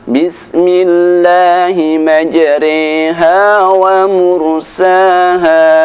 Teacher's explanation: membaca bacaan ra dibaca dengan bunyi re.